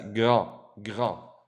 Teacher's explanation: The D is silent.